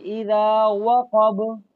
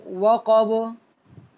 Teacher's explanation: واو کو پڑھتے وقت نا اوپر والے دانت نیچے والے ہونٹوں کے ساتھ نہیں لگنے چاہیے، ہونٹوں کو گول رکھیں گے